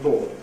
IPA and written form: bɔːd (bored)